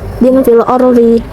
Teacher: Lalu juga ada tafkhim, yaitu dibaca tebal. Terdapat ro mati yang sebelumnya itu ada baris fathah. Cara bacanya ro-nya dibaca tebal.